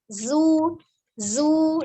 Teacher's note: ujung lidahnya berada di antara ujung gigi seri atas dan bawah, mendekati yang bawah. Zu. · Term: huruf zainya